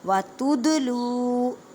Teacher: دال ساکن ہے، کلکلہ کریں، کلکلہ کا مطلب ہے ہلا کر پڑھنا